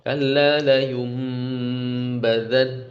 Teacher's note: Tapi gunah dari hidungnya, kalau kalian pencet hidung itu yang akan hilang.